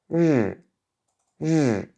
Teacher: Il faut que vous sentiez votre gorge quand vous prononcez ce son. Votre gorge doit vibrer à ce niveau-là.